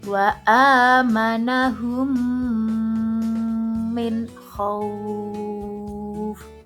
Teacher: memasukkan huruf mim sukun ke dalam huruf mim disertai dengan suara gunnah atau mendengung sekitar 2 ketukan atau harokat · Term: idgham misli